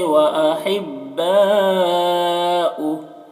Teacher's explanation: یہاں پر وقف کریں گے تو ہاں کا الٹا پیش سکون سے بدل جائے گا، تو اس طرح سے پڑھیں گے۔